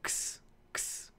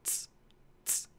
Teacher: there's some delay between the k and the s. Compare with ts, ts, it's immediate.